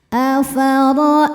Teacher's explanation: Afaritumul alif lamnya alif lam qamariah. Sebab alif lam menghadapi huruf qamariah yaitu mim. Maka lam dibaca dengan jelas. Afaritumul maa ma mad wajib muttasil.